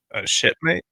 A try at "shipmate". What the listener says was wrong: A shipmate. Ship, not shit. Ship.